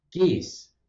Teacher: The natural place to put the tongue for geese is much farther forward.